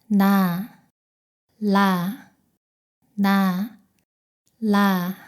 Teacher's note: 니음보다 혀가 더 뒤로 말려서 입천장에 닿습니다. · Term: 리을